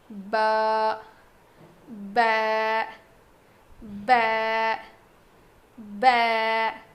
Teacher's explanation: با جو ہے دونوں ہونٹوں کے گیلے حصے سے ادا ہوتا ہے. مطلب ہمارے جو ہونٹ ہیں اس کا جو اندر کا حصہ ہے جو ہمیشہ گیلا رہتا ہے، ان دونوں کے ملنے سے، یعنی اوپر کا گیلا حصہ نیچے کا گیلا حصہ، وہ دو ہونٹوں کے جو دو گیلے حصے ملتے ہیں تو با ادا ہوتا ہے.